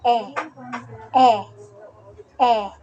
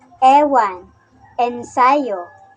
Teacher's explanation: ang posisyon ng ating dila ay nasa gitna at ang bahagi ng ating dila ay nasa harap kaya ito ay binibigkas na e e e halimbawa Ew ensayo